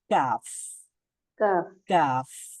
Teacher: নরম জায়গা থেকে আর একটু সামনে আগালেই শক্ত প্যালাট চলে আসবে শক্ত প্যালাটে যখন আমরা আমাদের জিহ্বার গোড়ানিটা লাগাবো তখন উচ্চারিত হবে কাফ